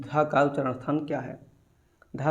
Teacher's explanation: धा जो है आपका उच्चारण स्थान इसका जो है दंत है